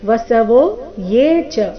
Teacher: ಇಲ್ಲಿ ಎ ಅಂತ ಇಲ್ಲ, ವ್ಯಂಜನ ಯ ಏಕಾರದೊಂದಿಗೆ ದೀರ್ಘ. ವಸವೋ ಯೇ ಚ ಸಾಧ್ಯಾ ವಿಶ್ವೇಶ್ವಿನೌ, ಮೊದಲ ಎರಡು ಅಕ್ಷರಗಳ ಮೇಲೆ ಆಘಾತ.